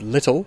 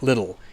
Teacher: in British English, a word like little has a very strong T in the middle of it. Whereas in Australian English and American English, that T is pronounced more like a R.